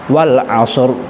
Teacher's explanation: Untuk roknya kalau kita waqaf, maka roknya tafkhim atau tebal.